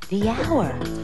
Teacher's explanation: it's a consonant sound but it's not the first sound the h is silent